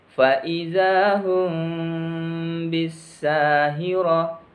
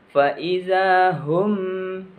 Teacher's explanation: Ikhfa Syafawi ini cara membacanya kedua bibir tidak ditutup rapat sehingga huruf mim sukun nya disamarkan antara dua bibir